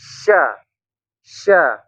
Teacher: tafasi menyebarnya angin sampai mengenai gigi bagian dalam atas dan bawah gitu ya · tapi kalau syin itu tafasyi menyebar